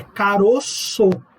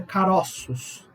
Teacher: No singular, você faz um timbre fechado, um timbre grave. No plural, você faz um timbre aberto, agudo. É caroço. No plural, é caroços. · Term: metafonia